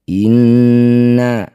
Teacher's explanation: nun bertasydid disebut bacaan gunah musyaddadah. Dengungkan bunyi nun dua harakat. Inna a fathah diikuti alif na disebut bacaan mad thobi'i.